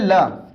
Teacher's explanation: वह व्यंजन जिसका उच्चारण करते समय हमारी जीभ के दोनों तरफ से हवा निकलती है या वायु निकलती है, तो ऐसे व्यंजन को हम पार्श्विक व्यंजन कहते हैं।